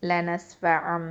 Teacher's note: மீமா மாறும். ஓகே, லனஸ்ஃபஅம் அப்படின்னு இக்லாபு பண்ணி குன்னாவும் செய்வோம்.